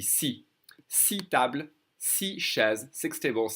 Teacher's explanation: when you use these numbers in a sentence, 6, you're not going to hear the X at all. Okay, if I said it's not followed by by a vowel, you won't hear the X at all.